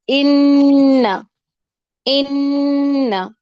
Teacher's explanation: وہ منہ سے کم اور ناک کی طرف زیادہ ہوتی ہے، اس کا اعتبار جو ہے، اس کا رجحان ناک کی طرف زیادہ ہوتا ہے، ان ان اور منہ کی طرف کم ہوتا ہے۔ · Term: غنہ